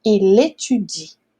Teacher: Além disso, tem a bendita da liaison, tá? Então o L aqui vai juntar com o E. Então a gente vai falar uma palavra só.